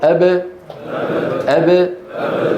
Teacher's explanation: بدل أن يقولوا أب قولوا أب. انقفلت الشفتان والهواء خلفهما يضغط يريد أن يخرج، فقالوا أب أب. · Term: القلقلة